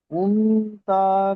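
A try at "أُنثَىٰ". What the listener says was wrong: উনতা নয়, উনসা,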